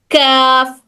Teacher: अगर हमारी जबान की जड़ थोड़ा सा आगे आगे को आकर सख्त तालु को टच करेगी तो वहां से निकलेगा हर्फ काफ